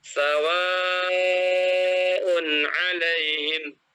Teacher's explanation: Mat wajib muttasil, ya itu apabila ada mat tabi'i yang bertemu dengan hamzah dalam suatu kalimat. Maka dibaca mat wajib ini harus dibaca 4 atau 5 harokat.